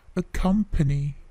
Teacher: perhatikan bunyi P itu sedikit plosive